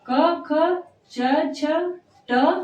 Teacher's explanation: स्वर तंत्रिकाएं एक दूसरे से दूर रहती हैं और उनमें कंपन नहीं उत्पन्न होती है। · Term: अघोष